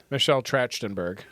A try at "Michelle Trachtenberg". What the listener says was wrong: Michelle Trachtenberg. It's a k, not a ch. Trachtenberg.